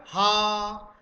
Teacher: हकार जैसी ध्वनि निकलती है स्वर यंत्र में कंपन के साथ , उसको स्वर यंत्री या काकल्य, यहाँ काकल नहीं लिखा गया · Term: काकल्य ध्वनि